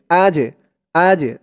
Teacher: জিমটা কলকলার হরফ ধাক্কা দিয়ে পড়তে হবে